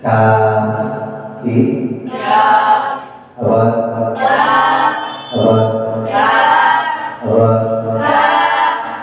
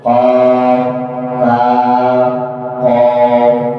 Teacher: কাফের সমতুল্য একটু মোটা করলে উচ্চারিত হয় কফ